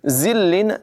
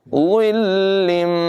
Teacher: तनवीन के बाद मीम हुरूफ़ यरमालून में से है, इदगाम होगा, गुन्ना करके मिलाकर पढ़ेंगे।